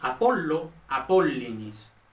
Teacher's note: tiende a convertirse en I cuando, en los casos oblicuos, está en una sílaba interior de la palabra